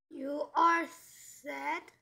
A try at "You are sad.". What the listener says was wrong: You are sad? 왜 이렇게 묻는 느낌이 들게 있습니까? You are sad.